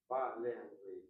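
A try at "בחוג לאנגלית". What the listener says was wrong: No, first Bachug and then Le Anglit. Department of, that word of is like the word to. Department to English.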